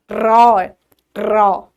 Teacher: র টা বললে জীভের মধ্যে হালকা কম্পন সৃষ্টি হয় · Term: কম্পিত ধ্বনি